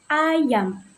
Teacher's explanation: Fonem A diucapkan dengan lidah yang rendah dan mulut yang terbuka lebar seperti pada contoh kata ayam.